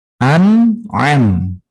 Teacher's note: Pertama makhrajnya di pangkal tenggorokan, yang kedua di tengah tenggorokan.